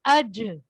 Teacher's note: اج جید میں جیم کو آپ نے ڈبل پڑھنا ہے